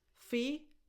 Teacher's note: Phi, tense E, as in the word eat